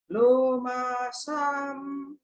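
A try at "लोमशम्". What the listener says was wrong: Now you went back to the short ah. Lomasham.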